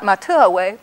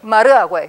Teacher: So T often becomes pronounced R following another word that ends in a vowel. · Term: T to R